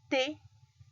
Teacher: Puedo sentir cómo mi lengua está detrás de mis dientes superiores